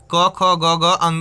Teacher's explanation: पूरा क वर्ग आपका कंठ से बोला जाता है